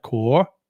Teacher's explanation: You got the tone that goes up. So, your voice has to go up when you say the word like core.